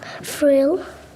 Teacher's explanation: the child correctly sounds out the diagraph but then Blends using FR instead of thr this is a common feature of six-year-old speech